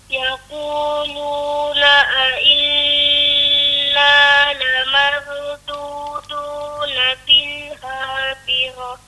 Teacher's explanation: Inna bagi rapat ujung lidah ke makhraj nun tu.